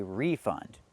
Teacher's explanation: We have to put the stress on the first syllable and say refund.